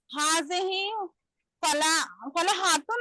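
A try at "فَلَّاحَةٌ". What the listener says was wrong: लाम 2 बार बोलो ना, लाम को टकराओ ना। फल्लाह,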